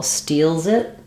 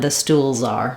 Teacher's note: all those letter S's are Z sounds because the L is voiced.